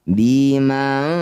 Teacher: Cara bacanya bunyi nun. Dengungkan dua harakat. Saat dengung lisan kita sudah bersiap bunyikan fa ya. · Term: ikhfa